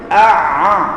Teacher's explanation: Ain ni Ain bunyi di halquum tuan-tuan ya ain bunyi di halquum Jadi kalau Ain bunyi di rongga